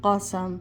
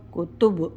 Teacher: نقطوں والا قاف ہے تو یہ موٹا پڑھیں گے، اور یہ کاف باریک پڑھی جائے گی